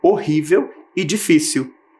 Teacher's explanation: todas as palavrinhas estavam com a sílaba tônica na penúltima posição